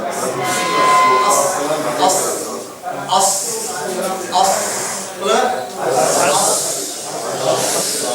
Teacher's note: அதனால நீங்க மொழியும் பொழுது இந்த கீழ் உள்ள பற்கள்ல உள்ள நாவு பட்டு மேல படாம விசில் சத்தம் வருமாக இருந்தால் அது சுவாதுடைய மஹ்ரஜ்